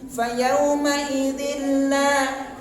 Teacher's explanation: idgham bila gunah, tanpa dengung, tanpa gunah, tanpa penahanan